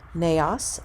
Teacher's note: Notice with neos, the accent's on the first syllable.